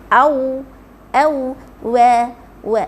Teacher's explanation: Huruf waw, dua bibir moncong.